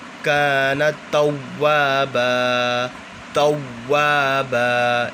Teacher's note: واؤ مشدد تھا تو غنہ نہیں کر رہے، جما کے پڑھ لیں